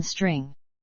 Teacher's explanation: s, a voiceless stop, and an approximant, as in string